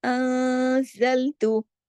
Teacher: اخفا کہتے ہیں آواز کو، کچھ دیر تھوڑی آواز ناک میں ہوتی ہے، تھوڑی باہر ہوتی ہے، اور اس پر غنہ بھی ہوتا ہے۔ غنہ ہوتا ہے تھوڑا سیکنڈ لیول کا، تھوڑا چھوٹا، پہلے نمبر سے اکمل سے تھوڑا چھوٹا غنہ کاملہ، انزلتو۔